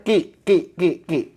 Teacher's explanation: enggak boleh juga ada udaranya nanti jadi Kaf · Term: Q kasr